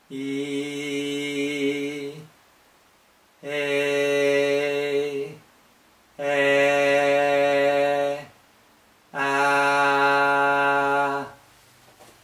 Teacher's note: close e a a a okay from close to open but they are all front vowels and they are all lateral vowels lateral meaning that the lips are spread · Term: front lateral vowels